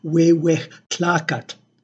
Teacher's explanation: It is no longer pronounced as a stop, as the but rather it is aspirated, it is a fricative, so it is pronounced more like the H of English